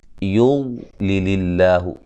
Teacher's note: لفظ اللہ کو باریک پڑھیں گے، اس سے پہلے زیر ہے